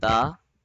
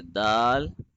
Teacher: we will not touch the tongue too hard in the letter ta, but we will have to be more gentler and softer and subtler in the letter dal as compared to ta